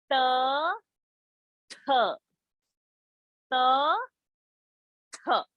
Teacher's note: tha is aspiration of ta. It is a dental varga sound.